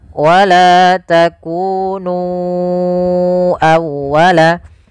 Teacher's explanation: Kemudian pada lafal nu awwalaka, ya, di sini sama hukumnya dengan lafal bima anzaltu, yaitu adanya mad jaiz munfasil. Maka kita harus memanjangkan nu-nya sepanjang 4 atau 5 harakat